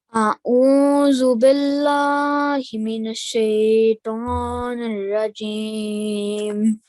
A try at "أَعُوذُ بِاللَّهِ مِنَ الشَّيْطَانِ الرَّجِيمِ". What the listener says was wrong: It will be A'udhu billahi minash shaitanir rajim. So no nasal sound here, no nasal sound here.